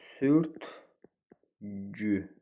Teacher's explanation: Sözün hecaları sürtükü, düzdür. Vurğu ikinci hecaya düşür, düzdür.